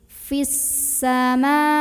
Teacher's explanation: Karena ada alif lam yang ketemu sama huruf syamsiyah yaitu sin. Maka alif lamnya ini dilewat, nggak perlu dibaca. Dari fi tekan langsung ke sin. Fissama. Ma mad tabi'i karena ada huruf yang berbaris fathah berdiri. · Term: alif lam syamsiyah